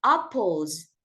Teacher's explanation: Number two is apples because L is voice. We add Z sound at the end.